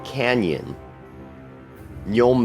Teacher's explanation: makes the sound as if we stuck an N and a y together in one character the same sound we make in Canyon young base LJ exists